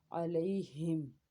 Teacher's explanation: उसके आगे मीम है, मीम को होंठों के खुश्क हिस्से से अदा करते हैं